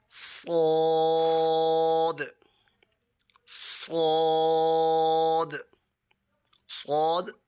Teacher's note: زبان کی نوک دونوں دانتوں کے اندرونی کنارے سے ادا ہوتا ہے